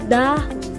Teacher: Ang paraan ng artikulasyon sa letrang D ay pasara o stop. Sa punto ng artikulasyon ay pangipin o dental at ito ay may tunog.